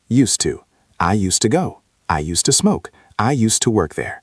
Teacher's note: The s sound becomes soft like a snake. S and the d almost disappears into the word too